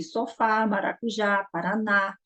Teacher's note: é uma oxítona, ou seja, a última sílaba é a mais forte